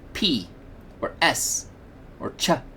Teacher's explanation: you can feel the air come out but you do not feel that same kind of vibration of your vocal cords